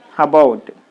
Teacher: there is the prefix a so you put the stress on the second syllable